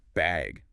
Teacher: do you need a bag or even just bag with a rising tone